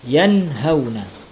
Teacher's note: Ya, nun mati bertemu dengan ha. Nun matinya dibaca jelas, tiada berdengung. Hukum bacaannya adalah izhar.